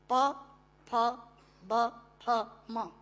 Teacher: प फ ब फ म दोनों होंठ मिलाकर बोले जा सकते हैं। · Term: ओष्ठांग